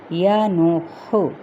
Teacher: یہ ہا جو ہے یہ آپ نے وسط حلق سے ادا کرنا ہے